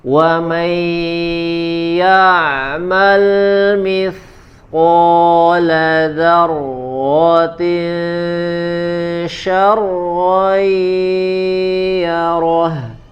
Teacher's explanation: huruf ainnya ya disempurnakan di bagian tengah tenggorokan